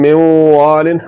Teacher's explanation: आवाज को नाक में ले जाकर थोड़ा सा लंबा करना है और नून में जो सिफत गुन्ना है उसको बरकरार रखना है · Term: इगाम नाकस